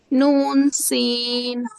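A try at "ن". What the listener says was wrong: नून को खींच के पढ़िए, नून,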